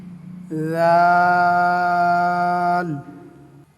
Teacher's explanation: জিহ্বার আগা উপরের দাঁতের আগায় গিয়ে লাগবে, হালকা উচ্চারণ হবে দাল।